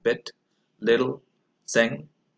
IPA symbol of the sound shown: ɪ